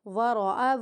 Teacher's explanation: اس حمزہ کی آواز کو بالکل بھی نہیں کھینچنا ہمیں، متحرک ہے۔